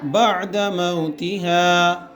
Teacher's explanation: عین کو ادا کرتے وقت جھٹکا نہیں آنا چاہیے نا، عین بہت پیار سے نکل گئے